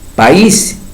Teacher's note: la I, acento ortográfico, está acentuada, se destruye el diptongo, no hay diptongo. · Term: destrucción de un diptongo